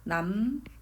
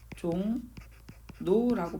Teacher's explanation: 미음, 이응 뒤에서 이런 현상이 벌어져요. 리을이 어떻게? 니은 되는 이 현상이.